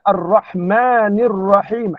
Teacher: Ha itu mesti disempitkan sedikit halkum kita kan menekankan ha ataupun ain tersebut